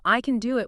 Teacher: It comes back to the rhythm, the beat. In the positive, I can do it, we usually don't stress can. It's weak. It shrinks to tin.